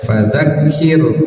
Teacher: ro sukun sebelumnya huruf berharakat kasrah maka rnya harus terdengar tipis